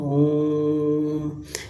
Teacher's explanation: ओम तो यहां जो ओ है वह दीर्घ ना हो के प्लुत हो जाता है